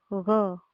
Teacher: ग को बोलने के लिए भी हवा हमारे गले से ही निकलती है।